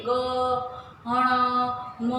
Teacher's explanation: જે વ્યંજનો પોતાના સ્થાન ઉપરાંત નાકમાંથી બોલે છે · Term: અનુનાસિક વ્યંજન